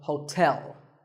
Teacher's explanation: and tell like the English word tell as in tell me the stress is on the second syllable